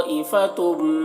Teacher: तनवीन के बाद मीम है हुरूफ यूमिन में से, तो तनवीन को मीम से मिलाकर गुन्ना के साथ पढ़ेंगे। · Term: इदगाम नाक़िस